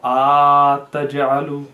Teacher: The first mistake is sometimes prolonging the a, so ataj'alu, which is incorrect.